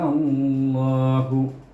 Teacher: kita kena membacanya 6 harakah dan ditasydid dengan lam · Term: hukum farq